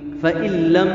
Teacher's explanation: فإن لم میں ادغام بغیر غنہ کے ہے، نون ساکن کے بعد لام آیا ہے، نون ساکن کے بعد لام آ جائے یا را آ جائے، اسی طرح تنوین کے بعد لام آ جائے یا را آ جائے، ادغام بغیر غنہ کے ہوتا ہے.